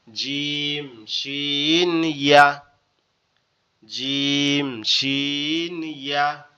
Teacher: জিম শিন ইয়া, আমরা এভাবে বলতে পারি, জিহ্বার মধ্যকান তার বরাবর উপরে তালুর সঙ্গে লাগায়া জিম শিন ইয়া। জিম শিন ইয়া, জিহ্বার মধ্যকান তার বরাবর উপরে তালুর সঙ্গে লাগায়া জিম শিন ইয়া।